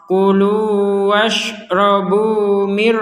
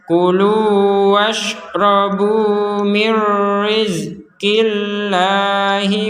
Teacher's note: kita memasukkan huruf nun ini kepada huruf ro sehingga menjadi mirri